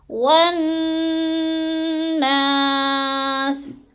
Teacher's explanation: نون مشدد کو سختی اور جماؤں کے ساتھ پڑھنا ہے، اور تھوڑا سا ناک میں رکنا ہے غنّے پہ